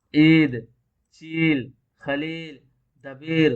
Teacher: جس یا سے پہلے زیر ہو اور زور دے کر پڑھی جائے، عید، چیل، خلیل، دبیر وغیرہ، دیکھ رہے ہیں عید سے پہلے کیا ہے، عین کے نیچے زیر ہے، لیکن اس کو کیا کر رہے ہیں، کھینچ کر بھی پڑھ رہے ہیں، یعنی زور دے کر جس کو بولتے ہیں۔ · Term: یا معروف